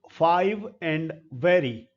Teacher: passive articulator है ऊपर के दांत इसीलिए लेबियो मींस होट डेंटल नीचे का होठ ऊपर के दांत की तरफ जाएगा